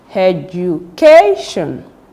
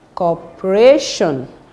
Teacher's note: you should stress the second syllable from the end that is the penultimate syllable